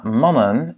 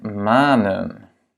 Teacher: mannen a un A court et manen un A longue